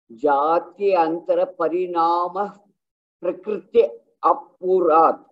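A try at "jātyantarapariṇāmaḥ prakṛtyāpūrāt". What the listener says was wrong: And when we join that, it becomes prakritya-purat. Parinama prakritya-purat.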